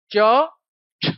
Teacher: वायु घर्षण के साथ बाहर आ रही है। च छ ज झ तो बीच-बीच में घर्षण वाले जुड़े हैं। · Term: स्पर्श संघर्षी